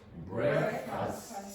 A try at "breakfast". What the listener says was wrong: It's not breakfast. It's breakfast. Not breakfast. If you say breakfast, you're creating this sound here, equal in strength to that syllable here. It's breakfast. Breakfast.